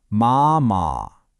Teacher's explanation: The first character, ma, is the first tone. That's high and flat. Imagine you're singing a high note and holding it steady.